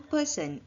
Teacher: the stem person which the stress is in the first syllable